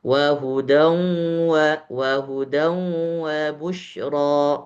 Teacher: Setengah masuk ke hidung, setengah lewat mulut. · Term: idgham bighunah